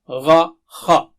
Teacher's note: غا خا دونوں موٹے اور اونچے ہیں